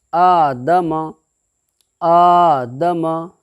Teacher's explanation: خڑا زبر کو ایک الف کے برابر کھینچ کر کے ادا کریں گے